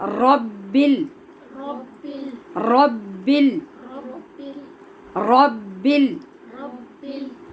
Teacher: لہٰذا را کی آواز ایک تو پر ہوگی، دوسرے غین کی طرح غبل کی آواز نہیں آئے گی۔ آپ را کو جو زبان کی لڑکھڑاہٹ ہے اس کو پیدا کر کے پڑھیں گے